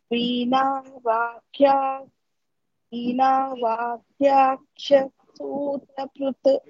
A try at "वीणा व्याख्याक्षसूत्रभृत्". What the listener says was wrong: वीणा व्या it's not va vya vya व्याख्या वीणा व्याख्याक्ष सूत्रभृत् That Kha is Mahaprana. Va and Kha both have Ya with them. Veena Vyakhyaksha Sutrabhrit.